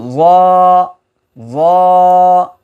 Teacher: জিহ্বার আগা সামনের উপরে দুই দাঁতের আগার সঙ্গে লাগা